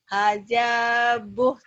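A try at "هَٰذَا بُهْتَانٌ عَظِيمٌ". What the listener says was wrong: Hadza. Jangan haja ya, jangan haja. Hadza. Buh, panjang.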